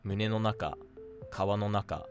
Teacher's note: This is actually really good to remember for when an Odaka word has -no naka come after it, in which the pitch is going to stay flat until after -na.